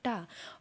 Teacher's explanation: टा बोलने पर जो जीभ है हमारी वो मुड़ करके ऊपर तालू में लग जाएगी, इसलिए ये कैसा हो जाएगा, ये हो जाएगा मूर्धन्य।